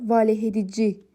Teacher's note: Vurğu son hecəyə düşür.